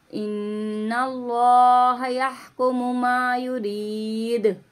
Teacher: दाल की आवाज़ पलट कर आएगी। इसको 3 अलिफ की मिकदार खींचेंगे।